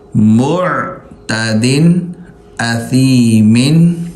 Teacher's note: یہاں پر غنہ نہیں ہوگا، اخفا نہیں ہوگا کیونکہ آگے حرف حلقی میں سے حمزہ ہے